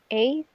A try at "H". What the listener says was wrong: H. Então, a gente faz o ch no final. H. Ou a gente pode pronunciar hate. Em alguns lugares, pessoas de alguns lugares falando de inglês pronunciam também hate. Então, a gente tem H ou hate. E aí, o H, aqui em Hara, ele vai ter o som do H, né, desse Hzinho, que é o som de house.